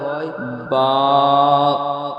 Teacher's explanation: 15 number মাখরাজ দুই ঠোঁট ভিজে অংশ হইতে উচ্চারিত হয় বা দুই ঠোঁটের ভিজে অংশ হইতে উচ্চারিত হয় বা